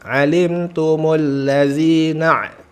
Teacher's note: huruf ain jelaskan a, tengah tenggorokan. Alimtumul ladzina, bunyi ain sukun na.